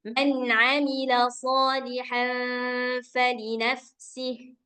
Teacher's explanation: suara nunnya kayak kita mengucapkan nun sukun biasa. Jadi suaranya terdengar jelas. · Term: izhar